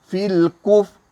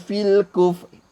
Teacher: Mulut kita mesti ke depan, menunjukkan ra tu ra tebal. Jangan fil kuf, itu jadi ra nipis.